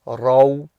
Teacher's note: Raw here is going to be full mouth because it's got the Fathah.